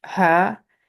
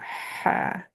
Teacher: Ha is a dry H sound. Ha, and ha is a moist H sound. Ha. So constricting the throat muscles at the back helps me.